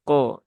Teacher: pantulan kafnya jangan menjadi ke ya tapi ko ya